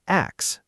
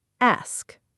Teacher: Say the S sound first, then close with the hard K.